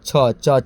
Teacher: यानी पूरा च का ग्रुप ही तालु से निकलेगा। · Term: च वर्ग